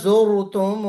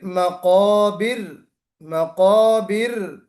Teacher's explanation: پھر مقابر، مقابر، را کو ہم باریک پڑھیں گے، زرتم میں را کو موٹا پڑھیں گے، مقابر میں باریک پڑھیں گے